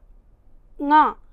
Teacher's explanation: इस ङ के उच्चारण में ध्वनि कंठ से वायु घर्षण करती हुई निकलती है और उसके साथ साथ कुछ वायु नासिका से भी निकलती है, इसलिए उसमें एक अनुतान आ जाती है, एक झंकार आ जाती है।